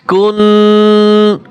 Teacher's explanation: এইযে গুন গুন আওয়াজে একটা আওয়াজ আসে নাকের ভিতর থেকে একটা আওয়াজ আসে